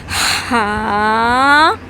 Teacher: ہا کو حلق کے درمیانی بیچ والے حصے سے، جو آپ کی حلق کا گلے پہ ابھرا ہوا حصہ ہوتا ہے، وہاں سے اس کی آواز نکلنی چاہیے